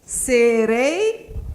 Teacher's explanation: Então, o E vai ser uma vogal e o I vai ser uma semivogal.